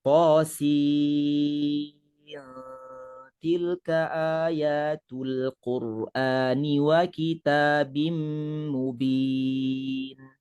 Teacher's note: Nun mati akan bertemu dengan ta akan menghasilkan hukum ikhfa.